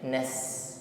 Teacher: Sin ini sifatnya istifal lidahnya tetap berada di bawah tidak terangkat ketika mengucapkan hurufnya